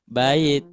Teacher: kalau didengungkan kalau diketuk otomatis ketukannya itu dua ketukan dengan ketukan yang lamban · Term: gun musyadadah